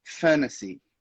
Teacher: Com o sotaque americano, você inclusive vai acabar cortando aquele T ali